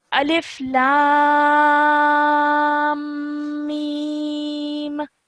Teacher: And when you're joining the lam to the meme, elongate the lam, hold the meme sound in your nose, joining it, and then let it go